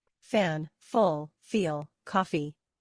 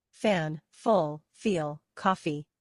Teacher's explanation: you need to touch your top teeth with your bottom lip and blow out air between your lips and teeth. Do not use your voice.